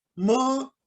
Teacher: when you say more then it is clear in the ma both the lips are sealed and you're nasalizing from here and you feel the vibration in in three chakras